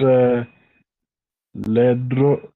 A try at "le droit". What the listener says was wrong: O-I is wa. Remember that. Le droit. T is silent. You cannot pronounce letter T because there's no consonant, there's no vowel after letter T. So we say le droit.